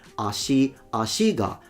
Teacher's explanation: the particle goes down because it's a odaka pattern